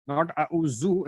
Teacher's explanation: So dal is when your tongue should be coming out and touching the upper two teeth. If the tongue remains inside, that's the most common mistake that people do, and the sound that comes is that of a z. So it is not auzu, not auzu.